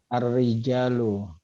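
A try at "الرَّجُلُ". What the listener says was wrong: Nah, bacanya bukan ar-rijalu, Pak. Ar-rojulu. Enggak, kalau ar-rijalu harus pakai alif. Kadang-kadang ada kata yang mirip, huruf-hurufnya sama, tapi yang membedakan adalah harokatnya.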